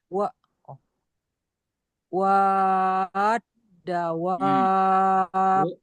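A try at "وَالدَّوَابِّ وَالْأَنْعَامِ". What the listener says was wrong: Wa-nya panjang 6 harokat. Ibu kurang. dengan yang 4 harokat yang kemarin kita pelajari. Kalau wab, wa-nya 6 harokat. Wab, panjang banget.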